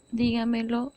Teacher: es la que lleva su acento prosódico antes de la ante penúltima sílaba